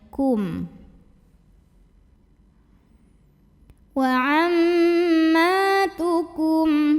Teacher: mimnya kita bunyikan dengan jelas, kafnya jangan dipanjangkan ya